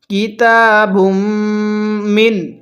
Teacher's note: কিতাবুম দেখুন বাকে মিমের সাথে আগিয়ে মিমের মধ্যে আমরা গুন্নাহ করব তাহলে নিয়মটা হলো মিমে নুনে তাসদিদ গুন্নাহ করা ওয়াজিব